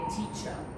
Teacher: the letter R doesn't produce any sound at the end of a word in British English, only at the beginning before a vowel. In American, however, it's pronounced all the time.